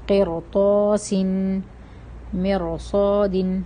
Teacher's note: قرطاسن مرصاد، اب میم کے نیچے بھی زیر ہے اور را کے اوپر سکون ہے، لیکن یہاں پر بھی ہم را کو موٹا پڑھ رہے ہیں کیونکہ بعد میں صاد آ رہا ہے، صاد موٹا حرف ہے، تو موٹا حرف ہے، اس وجہ سے ہم لگا رہے ہیں، ہم را کو موٹا پڑھ رہے ہیں.